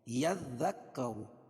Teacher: यज़्ज़क्करु, यज़ सब पर तशदीद है दोनों पे, और ज़ा और रा को पुर पढ़ेंगे क्योंकि रा पर पेश है